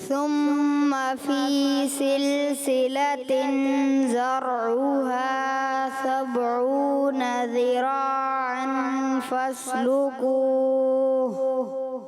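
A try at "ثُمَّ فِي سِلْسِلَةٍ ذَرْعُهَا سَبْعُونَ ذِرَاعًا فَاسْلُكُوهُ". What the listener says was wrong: زال کی ادائیگی کوشش کی اپنے اور اچھے انداز سے کوشش کریں، ٹھیک ہے، اور درست کرنے کی کوشش کریں.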